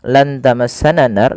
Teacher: Kemudian ketika melafalkan lan tamassanan nar, pada lafal nunnya lan tamassana nar, nunnya disamarkan kepada huruf ta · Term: ikhfa